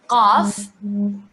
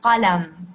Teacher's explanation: The qaf sound, it's like a K sound, but pronounced further back in your throat.